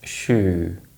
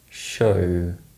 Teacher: Remember to make the oo sound more closed to avoid confusing it with the O sound in these minimal pairs.